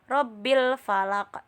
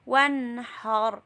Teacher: Hukum ro itu ada rof tafhim dan pun ro tarkik. Ro tafhim, ro-nya dibaca tebal, yaitu ro berharokat fathah dan ro berharokat domah. Ro sukun huruf sebelumnya berharokat fathah dan domah.